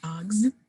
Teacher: that plural phoneme S is being produced as a Z